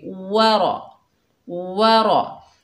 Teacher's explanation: वाव के ऊपर ज़बर, रॉ के ऊपर ज़बर, दोनों को बगैर खींचे पढ़ेंगे। रॉ को मोटा पढ़ेंगे, वाव को अदा करते वक्त होंठों को गोल करेंगे।